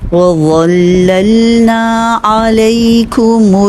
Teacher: اوپر والے سامنے والے دو دانت ان کے کناروں سے زبان لگے گی اور موٹا ادا ہوگا